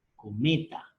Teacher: Cometa. Fuerza de voz en la sílaba me.